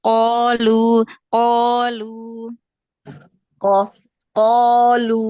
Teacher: tebalkan lagi qof karena dia fathah setelahnya alif tingkatan paling tebal